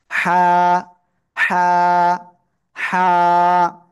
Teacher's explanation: গলাটা চেপে মুখ দিয়ে হালকা বাতাস বের করে এটা উচ্চারণ করতে হবে